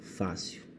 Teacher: a mais forte das sílabas é o fa que é a penúltima por isso eu vou chamar esse vocábulo de paroxítona essa paroxítona · A mais forte das sílabas é o Fá, que é a penúltima.